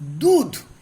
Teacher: এই দটা কিন্তু উচ্চারণ করছি মহাপ্রাণ ধ্বনির মতো, আর ধ উচ্চারণ হচ্ছে অল্প প্রাণ ধ্বনির মতো